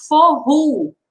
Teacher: O O no final, ele tem o som de U.